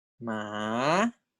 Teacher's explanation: it begins at level 2, and then it drops to level 1, and then it rises to level 4. So it's 2, 1, 4. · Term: Rising tone